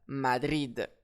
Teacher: J'accentue donc sur la dernière syllabe